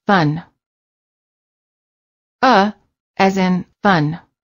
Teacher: uh sound the lips are completely relaxed and just slightly parted the tongue is also very relaxed and in the middle position